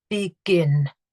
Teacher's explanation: I've got two syllables, and the stress is on the final syllable. So because I've got the stress on the final syllable, I need to double my letter.